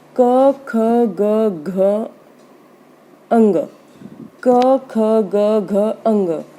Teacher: पूरा जो कवर्ग है वो कंठे होता है, यानी गले से बोला जाता है, कंठ से बोला जाता है।